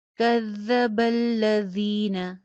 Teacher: زال کا مخرج چیک کیجئے، کذا میں بھی ہے، الذین میں بھی ہے، سیٹی کی آواز نہیں آئے گی. کذب الذین، زین یا مدہ ہے، ایک الف کے برابر لمبا ہوگا.